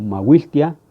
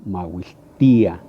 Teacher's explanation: Entonces no se acentúa cuando lo escribimos, pero tenemos que romper ese diptongo en la ia